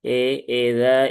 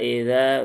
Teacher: i juga dia kasrahnya harus sempurna jangan miring menjadi e